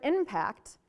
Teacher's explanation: we move this nasal that's actually kind of behind your teeth to between your lips